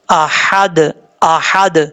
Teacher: آپ نے حمزہ کے بعد جو ہے یہ ہا بریک ہے, اس کو بھاری ساؤنڈ کے ساتھ نہیں پڑھنا, بریک پڑھنا ہے